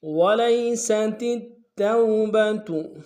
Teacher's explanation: وَلَيْسَتِ التَّوْبَةُ، وَلَيْسَتِ میں واو کو لمس ادا کریں گے، لام کو یا کے سامنے لانا ہے، یا لین بغیر کھینچے پڑیں گے، سین کی سیٹی باریک ہوگی، تا کو آگے اگلے تا کے سامنے لانا ہے توبہ کے، تا کے اوپر تشدید زور دیں گے۔